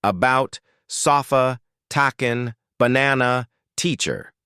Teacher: a completely neutral, effortless sound. Mouth barely open. Tongue in the center of the mouth. Zero muscle effort. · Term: schwa